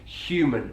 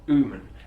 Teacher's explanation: you hear gemma chan there saying human not uman as it might be in other british english accents